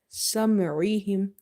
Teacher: Ain is having kasra, and ain is from the middle of the throat.